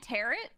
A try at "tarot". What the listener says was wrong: Why'd you say tarot like carrot? Like...